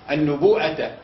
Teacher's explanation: لابد فيه من الزياده على المد الاصلي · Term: المد المتصل